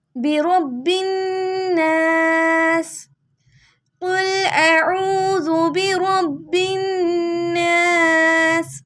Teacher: با کو نون سے ملانا ہے اور نون پہ گننا کرنا ہے